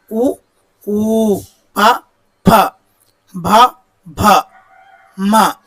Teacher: పెదవి సాయంతో పలికే అక్షరాలను ఓష్ట్యాలు అంటారు